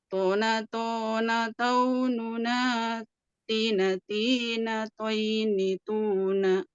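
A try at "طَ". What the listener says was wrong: Oke. Alhamdulillah, barakallahu fiik.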